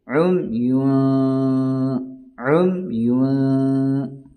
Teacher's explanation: عمیٌ، پھر یہاں اخفا ہوگا، تنوین کے بعد یا نون ساکن کے بعد حروف اخفا کے 15 حرفوں میں سے کوئی حرف آ جائے، اب یہاں فا آیا ہے، لہذا ہم یہاں ناک میں آواز کو چھپا کر پڑھا جاتا ہے